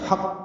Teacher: لحق الحا وسط حلق سے ادا کریں گے